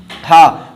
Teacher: सिर्फ गले से निकल रहा है, कहीं पर कोई अंग टच नहीं हो रहा है, ठीक है, कहीं कोई अंग टच नहीं हो रहा है, तो ये क्या हो गया, हा हो गया, ठीक है। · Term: स्वर यंत्रीय व्यंजन